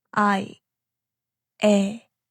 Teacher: Your mouth starts open like you're saying A and then it moves slightly toward E.